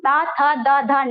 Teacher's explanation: हम ता था दा धा ना दांत से बोलते हैं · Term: दंत व्यंजन